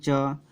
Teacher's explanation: जैसे हम लोग कहेंगे च तो जिह्वा क्या होगी, तालु को स्पर्श करेगी